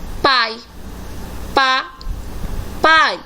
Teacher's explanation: O A se destaca e o I está enfraquecido. Então, o I aqui é classificado como semivogal.